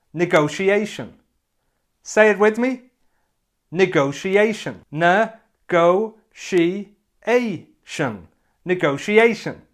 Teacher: so negotiate is the verb and the noun looks like this it has five syllables and this time the stress is on the fourth syllable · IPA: nɪˌɡəʊʃiˈeɪʃ(ə)n